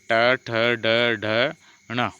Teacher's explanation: जब जीहा की उलटी हुई नोक का निचला भाग मुर्धा से स्पर्श करता है ऐसी स्थिति में उत्पन्न ध्वनि को मुर्द व्यंजन कहते हैं जैसे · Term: मूर्धन्य व्यंजन